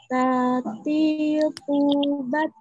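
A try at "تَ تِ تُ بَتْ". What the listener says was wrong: Belum ada aliran udaranya itu, Mas. Belum juga, masih belum.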